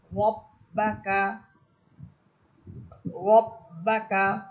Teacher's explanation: র হরফের উপরে আছে জবর। এজন্য র হরফ এটা মোটা হবে।